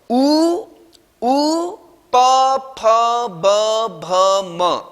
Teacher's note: छोटा उ, बड़ा उ और पवर्ग अर्थात प फ ब भ म का उच्चारण स्थान हमारे ओष्ठ है